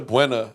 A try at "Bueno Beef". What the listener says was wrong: is that how it's pronounced? Because it ends with an O instead of A's. I always thought it was Bueno.